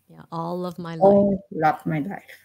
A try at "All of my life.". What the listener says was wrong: Yeah, very good.